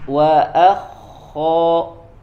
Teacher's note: sempurnakan makhrajnya di adnal hal ya, dari tenggorokan yang paling dekat. Wa akho ya, tebal.